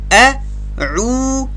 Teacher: واو مده او د واو مده کشول یو الف قدر